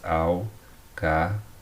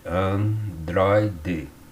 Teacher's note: os ditongos abertos ei e oi das palavras paroxítonas, né? Palavras que levam acento na penúltima sílaba